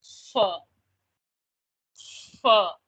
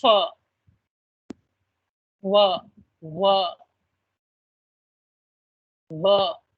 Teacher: the air is kind of partially blocked, but there is release of air